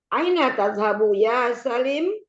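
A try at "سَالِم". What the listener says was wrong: Salim panjang. Salim.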